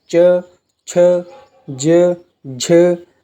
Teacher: जिस ध्वनियों के उच्चारण में जीभ का मध्य भाग तालु से स्पर्श करता है, यानी हमारी जीभ है जो वो ऊपर की तरफ फोल्ड होती है और तालु से स्पर्श करती है, उन्हें तालव्य व्यंजन कहते हैं।